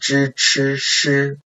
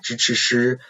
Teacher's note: When we make this pronunciation, we also have a curl of the tongue.